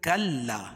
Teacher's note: کلا کاف کو لام میں سختی کے ساتھ، کیوں کہ لام کے اوپر تشدید ہے اور الف سے پہلے زبر ہے تو الف مدہ.